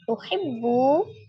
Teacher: Bu, waw sukun sebelumnya dhamma di huruf ba, dibaca mad tabi'i waw, dibaca 2 harakat.